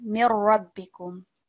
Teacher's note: we have got a different example of Mim Mushaddad, of complete assimilation. So we don't hear the Noon Sakin